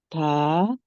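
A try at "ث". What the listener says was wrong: था की आवाज नहीं आनी चाहिए, था नहीं है, टी एच की साउंड नहीं आए, या ता और हा की नहीं,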